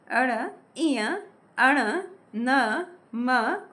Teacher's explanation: ये है अनुनासिक। वे वर्ण जो मुख और नाक से उच्चारित होते हैं। वे अनुनासिक वर्ण कहलाते हैं।